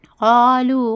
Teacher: قالوا قاف الف زبر قال لام واو پیش مو لو قالوا واو مدہ ہے اس لیے کھینچ کر پڑھنا 2 حرکت کے برابر